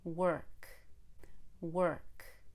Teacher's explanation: you really need to pull your tongue backward on the er and hold it longer